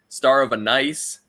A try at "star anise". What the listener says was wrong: There's no of in it. It's Star Anise. That's it.